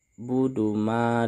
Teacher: Lanjut, a'budu ma. Budu ma, di sini kata ma di sini harus kita baca panjang 2 harokat. Karena di sini terdapat mat tabi'i.